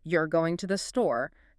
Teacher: Pitch goes up at the end, but the word store still means store.